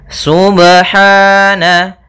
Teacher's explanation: Pada bacaan subhana ada pada lafal huruf ba sukun. Apabila ada huruf ba dia harakatnya sukun, maka ada hukum qalqalah, maka harus dipantulkan dalam membacanya. Hati-hati juga dalam pantulannya, jangan sampai ada tambahan hamzah atau di dalam bacaannya ada sakta, misalnya subhana, ini sakta.